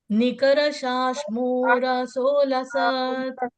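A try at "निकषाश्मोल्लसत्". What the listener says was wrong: Nikara nahi, Nikasha. Nikashashmora. Nikashashmora solasat. Nikashashmora solasat. Nikashashmora solasat.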